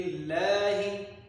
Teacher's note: لفظ اللہ کو باریک پڑھنا ہے کیونکہ اس سے پہلے زیر آ گئی ہے